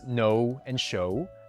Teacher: the words no and show blend the vowels O and U at the end. Okay and steak blend the vowels E and I, but none of this blending happens in French. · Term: diphthong